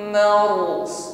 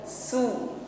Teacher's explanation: Huruf shad tebalkan, bukan su, tipis sebagaimana pengucapan huruf sin. Marsus ditutup dengan huruf shad lagi, maka tampakkan tebal pada huruf shadnya.